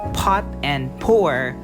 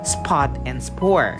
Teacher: Notice that the sound P in the words pot and pour produces more blow of air than that of P in the words spot and spore. The sound of P or P in the initial of the word is an aspirated stop and represented by this symbol.